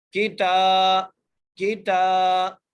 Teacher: کھڑی زبر آنے کی وجہ سے ہم تا کو ایک الف کی مقدار کھینچ کے پڑھیں گے